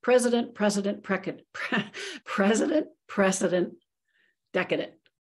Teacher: that vowel in the middle is known as a schwa in terms of its articulation